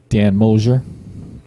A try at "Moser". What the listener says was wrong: Moser. Where is there a S in Moser? Moser. You're like, Moser. Moser.